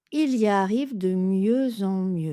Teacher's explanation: Le X est muet bien entendu et la liaison est en Z entre le X et la voyelle nasale en